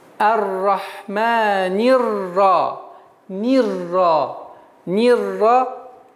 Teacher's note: автоматически артикль и алиф мы не читаем